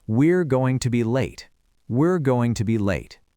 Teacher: Students often say we are. >> We reduce that to we're and in fast connected speech it often just sounds like the word were.